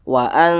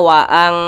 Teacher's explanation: akrab maka cara membunyikannya itu disamarkan kemudian juga didingungkan akan tetapi kadar samarnya itu lebih tinggi daripada kadar dengungnya jadi lebih condong berbunyi n tapi disamarkan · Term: Ikhfa Hakiki